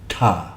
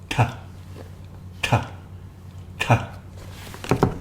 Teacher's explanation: actually see the tongue coming between the teeth or is it retroflex where the tongue is pulled back against the roof of the mouth